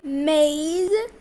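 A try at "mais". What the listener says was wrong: No, dear, it is not maize. In French alphabet sound A. How will you read in French? A pronunciation.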